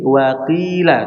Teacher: jadi Q ini huruf yang tebal namun ketika kasrah dia ketebalannya diringankan